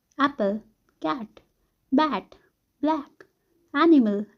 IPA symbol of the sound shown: æ